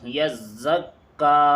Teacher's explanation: یزکا، یا زا زبر یز، زا کاف زبر زک، یزک، کاف کھڑا زبر کا، یزکا۔ دیکھیے زا بھی دو مرتبہ پڑھا جا رہا ہے اور کاف بھی دو مرتبہ پڑھا جا رہا ہے، کیونکہ دونوں پہ تشدید ہے